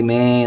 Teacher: में नाक से आवाज आ रही है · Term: अनुसार बिंदु